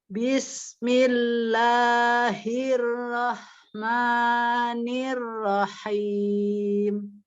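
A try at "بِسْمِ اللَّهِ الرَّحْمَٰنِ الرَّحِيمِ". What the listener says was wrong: Nirnya jangan niro, nah dia tipis ya. Jangan nir. Nah kalau nir itu kan ditebalkan, ya itu ayunan aja, jadi ayunan suara kita ya. Tapi bukan berarti kita baca lambat ya.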